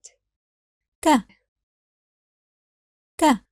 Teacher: in Arabic, it's slightly aspirated